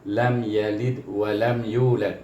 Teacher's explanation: Apabila kita menyebut suara itu, apabila dia mati, huruf qalqalah ini mati, sama ada di tengah kalimah, sama ada di hujung ayat atau hujung kalimah, ataupun dia bertasydid, iaitu apabila menyebut hurufnya dengan dia mati, dengan tanda mati, maka bunyinya melantun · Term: qalqalah sughra